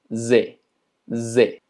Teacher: tenemos que hacer ese zumbido, algo similar al inglés, es un poquito más exagerado.